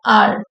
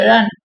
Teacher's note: ஆனா English people native speakers பேசுறப்போ ஆர் என்ன ஆகும் அப்படின்னு சொன்னீங்கன்னா, உங்களுக்கு வந்து அதை டச்சே பண்ண மாட்டாங்க. மேல இந்த டிப் ஆஃப் த டங் வந்து மேல போகும், ஆனா டச் ஆகாது. ஆர் அப்படின்னு சொல்லுவாங்க, டச் ஆகாம சொல்லுவாங்க.